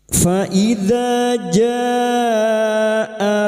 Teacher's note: " Faidza ja": kegilaan bertemu dengan hamzah dalam satu kata, yaitu mad wajib muttasil. Kita memperpanjang mad wajib muttasil selama empat atau lima harakat.